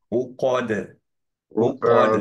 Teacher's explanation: উকদ খেয়াল করো কফের পরে দালটার সময় স্পেশালি সাহুল কলকলা একটু খেয়াল করো কলকলাটা হচ্ছে জাস্ট হচ্ছে তোমার মুখটা এখনো স্মাইলি ফেস হয়নি হ্যাঁ কফ থেকে যখন তোমার দালে যাবে তখন স্মাইলি ফেস একটু সুইচ করবে নয়তো দালটা হেভি হয়ে যায়